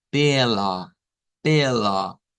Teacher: Es una A media centralizada.